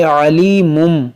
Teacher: तनवीन के बाद बा है तो यहाँ पर भी इक़लाब करेंगे, इसको पढ़ेंगे अलीमुम और गुन्ना करेंगे